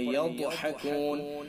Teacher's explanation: ضاد حروف مستعلیہ میں سے لہذا ضاد کو پر پڑھیں گے